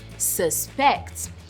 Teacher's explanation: the pronunciation changes because the stress is more on the second syllable